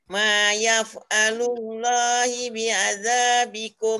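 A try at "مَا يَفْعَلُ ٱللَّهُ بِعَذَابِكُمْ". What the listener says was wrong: Ma yaf'alullahu. Baris depan. Hu.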